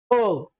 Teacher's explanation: ज्यावेळेस आपण अ आ या स्वरांचा मित्रांनो उच्चार करतो तर कंठापासून यांचा स्वर निघतो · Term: कंठवर्ण